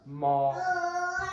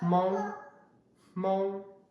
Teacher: instead of saying the M with your voice, ma, instead you say it without your voice, ma. Okay? And a good example of this is Hmong, Hmong, okay? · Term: voiceless sound